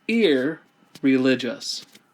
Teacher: the N is going to assimilate and become an R